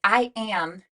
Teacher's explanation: that a sound is actually that nasalized a